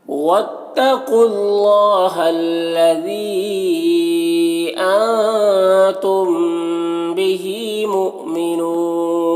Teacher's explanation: ذی میں یا مدہ ہے، ذی میں مد منفصل ہے، اسے 3 4 الف کے برابر کھینچیں گے۔ تم کے نون میں اخفا ہو رہا، نون کی آواز کو ناک میں چھپا کر پڑھیں گے۔ · مؤمنون یہاں پر حمزہ ساکنہ جھٹکا لگے گا